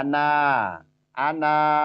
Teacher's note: kita wakof atau kita berhenti itu dibacanya panjang